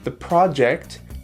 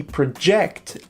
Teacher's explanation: the project, the stress is on the first syllable, and project, the verb, it's on the second syllable